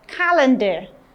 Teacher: you have your stress on the first syllable for calendar